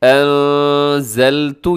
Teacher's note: بِمَا، اس کے اوپر چھوٹی مد ہے۔ انزلتو، یہاں اخفا ہو رہا ہے، نون ساکن کے بعد زا جو کہ حروف اخفا میں ہے